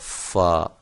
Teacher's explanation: فا کا مخرج کیا ہے کہ یہ جو ہے آپ کے اوپر والے جو دو دانت ہیں یہ آپ کے ہونٹوں کی تری والے حصے سے ملتے ہیں۔ دانت جو ہیں اوپر والے دو، سامنے والے دو بڑے دانت جن کو ہم ثنایا کہتے ہیں، وہ آپ کے ہونٹوں کی تری والے حصے سے جب ملیں گے تو فا ادا ہوگا، فا۔